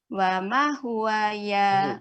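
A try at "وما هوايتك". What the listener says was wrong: bukan huwa, hiwa. Ya-nya panjang, Ibu. Ya-nya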